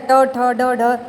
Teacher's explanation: मूर्धा यानी तालू के ऊपरी भाग जो होता है तो मूर्धा व्यंजन कहा जाता है